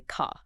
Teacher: But a lot of British accents, particularly in southern England, are non-erotic. So the R is often dropped, right? Unless the next word starts with a vowel. So you wouldn't say car, you'd say ca.